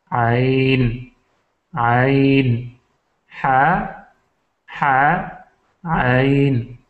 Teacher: ہا عین، یہ دونوں وسط حلق سے نکلتے ہیں